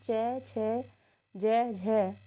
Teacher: हिंदी में स्पर्शी संघर्ष व्यंजन चार होते हैं च छ ज झ